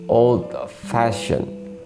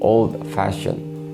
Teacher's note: compound adjectives and verbs. The stress is on the second word.